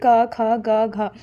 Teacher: क वर्ग व्यंजन जो है उन्हें कंठ व्यंजन कहा जाता है, जैसे इनका उच्चारण कंठ से होता है